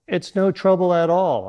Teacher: use a downward intonation on at all to make it sound relaxing and comforting.